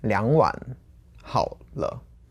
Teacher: I'm kind of separating the units because to me, 2碗 stands together and then 好了.